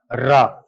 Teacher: मूर्धन्य ध्वनियां हैं, मूर्धा से उच्चारित होने वाले वर्ण हैं